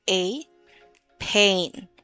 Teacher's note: when you say the word pain in English, you combine the vowel sounds for A and I.